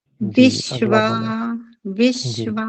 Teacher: संयोग है सकार और बकार का संयोग है इस कारण से पहले जो ह्रस्व ई है उसको दबाव देकर बोलेंगे तो सुंदरता से बोला जाएगा